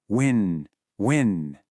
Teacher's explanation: It's a really soft kind of breathy sound